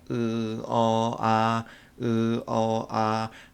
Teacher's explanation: 혀의 높이는 점점 나눠지면서 입이 벌어지는 정도는 입이 점점 내려가면 갈수록 크게 벌어진다는 걸 알 수가 있습니다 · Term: 혀의 높이에 따른 분류